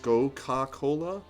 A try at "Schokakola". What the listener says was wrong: That's how you pronounce it. SCH is a sh sound.